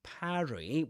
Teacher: parry with an A, with that A sound, just like in trap or in cat. That's British English.